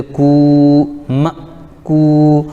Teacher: کاف پر پیش لیکن واو ساکن تو واو مدہ ہو جائے گا